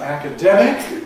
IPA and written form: ˌækəˈdemɪk (academic)